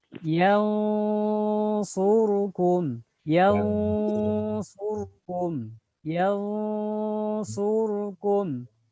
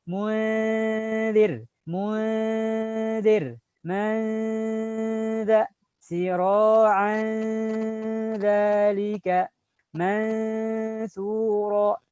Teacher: Bunyinya berbeda. Karena huruf shad termasuk huruf yang tebal, maka bunyi mirip angnya dia menyesuaikan dengan huruf yang di depannya. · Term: tafkhimul ikhfa